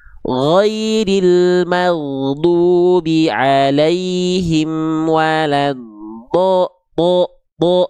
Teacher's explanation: huruf yang tebal itu akan terdengar vokalnya vokal O